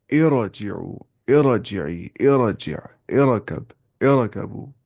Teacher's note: عارضی والی زیر کو ہمیں کیسے پڑھنا ہوتا ہے؟ ہمیں وہاں پڑھنا ہوتا ہے موٹی آواز سے را کو